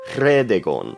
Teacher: RH is a trilled R with no voice behind it, sounding kind of like a cat's purr.